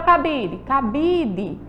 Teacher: Ela não é uma palavra oxítona ela é uma palavra paroxítona porque é a penúltima sílaba